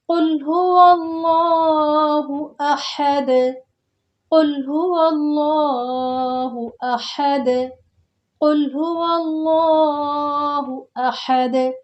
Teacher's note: جب ہم آیت پہ رکیں گے تو دال جو ہے ساکن ہو جائے گا۔ جب دال ساکن ہو جائے گا تو قاف، طا، با، جیم، دال جب ساکن ہوتے ہیں کلکلا ہوتا ہے، آواز پلٹ کر واپس آتی ہے۔